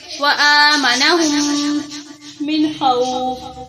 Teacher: وآ الف کھڑی زبر آ، حمزہ ہے یہاں پر کھڑی زبر ہے، اس کو لمبا کریں گے